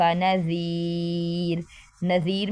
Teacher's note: ذال دونوں دانتوں کے درمیان زبان کا کنارہ اور لمبا کریں گے، اور را ادھر باریک پڑھی جائے گی کیونکہ را کے نیچے زیر ہے